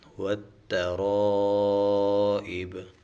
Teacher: جب وقف کریں گے تو اس با کے اوپر قلقلہ بھی کریں گے